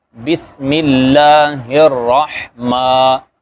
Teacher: اس کے بعد میم کے اوپر کھڑا زبر ہے تو یہ الف مدہ کے برابر ہوتا ہے، اور میم دونوں ہونٹوں کو ملانے سے ادا ہوتی ہے. تو یہ ذرا نرمی سے پڑھیں گے، بسم اللہ الرحمن.